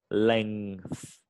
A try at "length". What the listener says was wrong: Yeah, so you can hear, you get that little k, yeah, which it's okay. You can try say it without it. So just length.